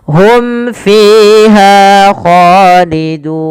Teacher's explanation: Jelaskan suara mimnya pada lafal hum fiha karena ia izhar syafawi.